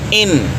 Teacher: आपकी जुबान जो है वो अनया से लेकर सनाया तक जो दांत है इनकी जड़ों पर आपकी जुबान की जो तर्फ है वह लगेगी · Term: नून का मखर